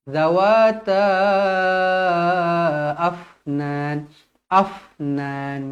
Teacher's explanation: huruf fa dibaca hamas, berangin. Jadi kita nak dia matikan terus dan berangin sahaja.